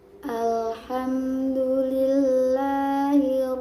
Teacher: Kemudian ada lam jalalah yang dibaca dengan tarkik karena ada lam jalalah yang sebelum lam jalalahnya itu ada harokat kasroh, maka dibacanya dengan tarkik, yaitu Alhamdulillahi.